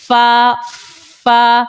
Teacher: हिस्सा लगता है तो फा निकलता है आप पढ़ो फा फा ऊपर के दांतों के किनारे हमारे नीचे होठों के जो तर हिस्सा है उसके वहां जाकर लग रहा है तो फा निकल आता है · اوپر کے دانتوں کے کنارے ہمارے نیچے ہونٹوں کے جو تر حصہ ہے اس کے وہاں جا کر لگ رہا ہے تو فا نکل آتا ہے